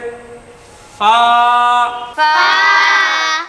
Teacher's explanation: উপরের দাঁত নিচের ঠোঁট একটু বাতাস ছেড়ে